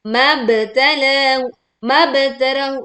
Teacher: Ida, ini juga sama 2 harokat. Mab, nah, pantulkan ba sukun dengan suara yang jelas.